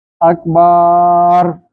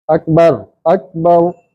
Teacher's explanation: अगर ज़बर के बाद अलिफ नहीं है तो उसको लंबा नहीं होने देंगे। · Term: शार्ट आवाज़